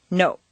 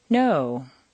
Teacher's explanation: in Spanish or Japanese, the word no is, to our ear, clipped or abbreviated.